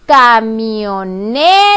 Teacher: por lo tanto la sílaba tónica es la sílaba ne para que suene camioneta